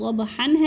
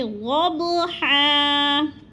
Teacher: اور ہا دو زبر حن، یہ تنوین کو ہم وقف کی صورت میں ایک الف میں بدل کر پڑھیں گے